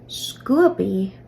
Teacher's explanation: it's just a b with breath B so it's almost like the original B sound and the H in the suffix are combining to make a p sound